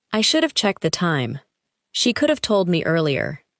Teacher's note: Each phrase contains have, but the word is weak and connected to the word before it.